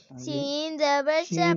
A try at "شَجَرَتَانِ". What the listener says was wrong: شین اب سین پڑھ دیتے. شجرتن شجرتان شجرتین.